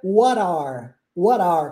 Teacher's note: a gente transforma esse t em r e vira What are What are como se fosse uma palavra só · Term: junção